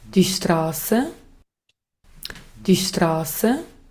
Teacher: Ahora en el austríaco de ya vemos que para comenzar la R no es uvular, es R suave. · esta no es la A como la A del español. Esta es una a hacia atrás. Es es una vocal diferente.